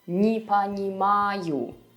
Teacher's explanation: The negation particle не is almost never stressed in Russian. So you would always be pronouncing it as ни, just like as an extra syllable.